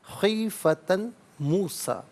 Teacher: خیفتن میں تا پر دو زبر کی تنوین، اسے موسیٰ کی میم کے ساتھ ملائیں گے، میم کی آواز کو غنّے کے ساتھ ادا کیا جائے گا۔ خیفتن موسیٰ نہیں، خیفتن موسیٰ، یہاں یرملون کا قاعدہ اپلائی ہوگا۔